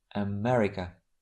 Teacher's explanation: We have the first sound and the last are very weak. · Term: schwa